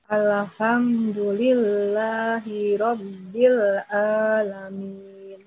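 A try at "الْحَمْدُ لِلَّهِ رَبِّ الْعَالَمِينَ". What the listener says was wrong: Qalqalah lovers. Ya, jangan dikolkolahin. Al-ha langsung.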